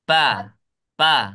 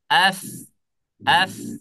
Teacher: Mengalir ya nafasnya, suaranya juga mengalir. Kalau huruf fa ini tidak mengalir suaranya, maka dia akan berubah hurufnya. Bukan menjadi huruf fa, tetapi berubah menjadi huruf P.